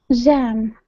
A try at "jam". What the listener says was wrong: You're saying zzz. Okay, instead of holding your mouth out wide and saying jam, it's j. Okay, jam. Okay, I can tell the difference between jam and jam. Okay, so if you have a mirror or something like that, take a look at your lips.